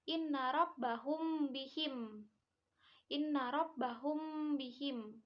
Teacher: hukum bacaannya samar jadi apabila ada mim mati bertemu dengan ba disebutnya Ikfa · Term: Ifa syafawi